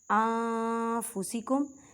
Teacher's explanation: نون ساکن کی آواز کو چھپانا ہے، ان نہیں کہنا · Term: اقفا